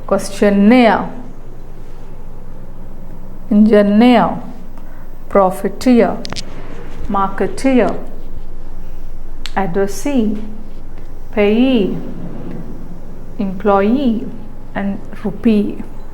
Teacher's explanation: so the suffix itself receives stress. Okay, when you have ending with IE or EE or ARE or EE.